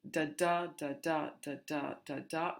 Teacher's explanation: there is this very strong iambic rhythm of the mostly 10 syllables and the stress on the second syllable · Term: iambic pentameter